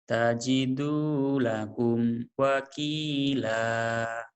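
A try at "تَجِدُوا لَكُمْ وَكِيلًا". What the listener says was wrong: Udah mending cuma masih ada ya namanya merubah. tajiro lakum wakila gitu ya. Nah sekarang didatarin. Tajidu, tajidu, tajidu lakum wakila. Kau juga tekanan kayak kayak orang Jepang lagi, hah, kayak gitu ya. tiap hari dengar orang Jepang ngomong jadi itu ya, penekanannya kayak gitu.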